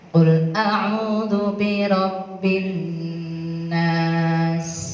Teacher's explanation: Nun tasjidnya itu gunnah. Hukumnya namanya gunnah musyaddadah.